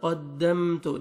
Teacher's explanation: قاف کو موٹا کر کے پڑھیں گے اور آگے میم ساکن کا اظہار ہے ، قدمت جلدی پڑھیں گے، قدمت نہیں اخفا نہیں کرنا، جلدی